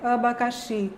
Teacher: Em alguns dialetos do Rio de Janeiro, por exemplo, esse abacaxi, esses As de abacaxi vão ser substituídos por uma vogal média baixa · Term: Um A que é reduzido